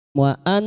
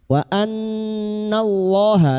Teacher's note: Bi anfusihim wa annallaha. Wa an, nun yang bertasdid guna musyaddada kita dengungkan selama 3 harokat